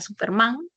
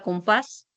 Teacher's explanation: Ya sabemos que el acento cae en la última sílaba. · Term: oxítonas